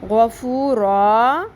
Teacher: مثلاً غفوراً کو غفورا، یعنی دو زبر والی تنوین زبر اور الف میں بدل کر مد اصلی میں بدل گئی